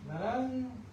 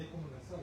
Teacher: ¿dónde está la lengua en la segunda N? Naran, más atrás, ¿verdad? Naran, y es como nasal, ¿no?